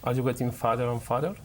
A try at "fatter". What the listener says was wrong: Fatter, más T.